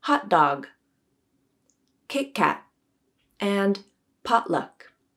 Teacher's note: We use a glottal stop when T comes before N in final unstressed syllables, like in the words written, cotton, and forgotten. We may also use a glottal stop across word boundaries, when one word ends in a T and the next word begins with a stop consonant